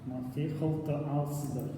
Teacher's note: Алцыдæр почти не слышно, потому что там есть звук,который пишется „Ы“, это призвук.